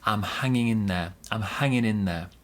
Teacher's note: So the G in hanging disappears and we get hanging in there. We link the N and the I sound.